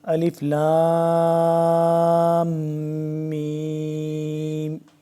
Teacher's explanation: اس کی آواز کو ناک میں ہم نے تھوڑی دیر کے لیے لے کے جانا ہے، جس کو غنہ کہتے ہیں